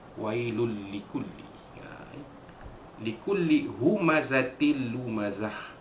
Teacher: Maka hukum dia sama, iaitu idgham bila ghunah, memasukkan bunyi tanwin ke dalam huruf lam dengan tanpa dengung